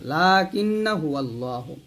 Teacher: লাতে আমরা লাতে টান দিব, লা কিন্না, এই নাতে টান দেওয়া যাবে না, লা কিন্না হুয়াল্লাহু।